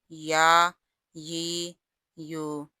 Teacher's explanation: یا غیر مدہ ہو تو درمیانے زبان اور درمیانے تالو سے ادا ہوتا ہے، اور اگر مدہ ہو تو پھر جوف دہن سے۔